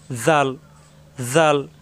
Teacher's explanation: জাল, নরম করে, জিহ্বার আগা উপরে 2 দাঁতের আগায়,